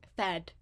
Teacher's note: a voiceless labial dental fricative followed by uh a a highish front vowel, lax highish front vowel um unrounded and then at the end there is a um voiced alveer oral stop fed.